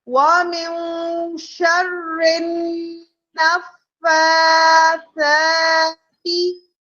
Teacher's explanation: را کے نیچے زیر ہے تو اب ہم اسے موٹا نہیں پڑھیں گے · ٹھیک ہے، ہم نے ملایا، ہم نے غنہ کیا، ہم نے فا کا کھڑا زبر پڑھا، ہم نے سا کا کھڑا زبر پڑھا اور تا کو ہرگز نہیں کھینچا